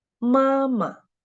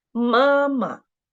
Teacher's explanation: The second syllable of this word is the neutral tone, and we should read it very short and light.